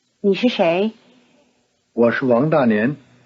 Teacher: 是 is weakened in these sentences to a toneless sh sound